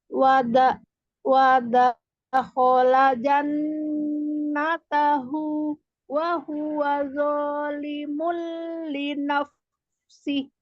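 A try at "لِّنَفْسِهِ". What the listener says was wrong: Linaf. Haknya tipis lagi, tidak linaf. Tidak linaf, tapi linaf. Ayo, di mana makhrajnya fa? Kenanya di bibir yang bibir yang basah, ya, jangan dilipat. Linaf, linaf, ya, jangan dimundurkan ke belakang bibirnya, ya. Cukup yang dikenakan itu yang bagian yang basahnya itu, ya, tinggal dinaikkan saja dan ditekan.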